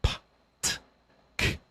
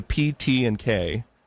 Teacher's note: So, P, T, and K, those are all voiceless stops.